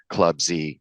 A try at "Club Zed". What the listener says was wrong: it is Club Zed it's not club Z Club Z is an American mispronunciation of a very old English letter